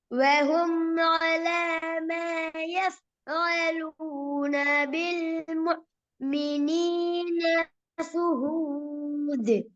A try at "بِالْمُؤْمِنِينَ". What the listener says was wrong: இன்னும் கொஞ்சம் முஃமினீன அலிஃப் உச்சரிங்க பாப்போம். இன்னும் கொஞ்சம் உச்சரிங்க எல்லாம்.